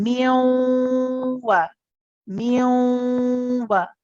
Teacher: The sound is going through the nasal cavity, okay? Whilst we are doing that, we are pronouncing the wow, okay? So our lips then round for the woo. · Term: incomplete merge